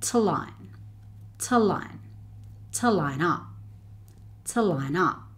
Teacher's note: the 'tuh' is joined with 'line' to make one long word